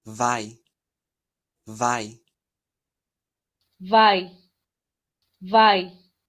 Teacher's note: La V, recuerden que es un sonido labio dental, labio, dientes.